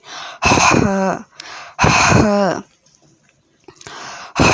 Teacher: উচ্চারণে গলার মধ্য হতে শো শো করে শব্দ বের হবে। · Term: লম্বা হা